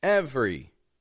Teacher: we're dropping a vowel from the middle, and we're just making it 2 quick syllables.